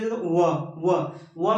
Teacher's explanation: फिर वो कह रहा वक्रस दंत ओष्ठ व मतलब दंत और ओष्ठ दोनों से मिलने व व में दांत भी काम करेगा ओष्ठ भी काम करता है।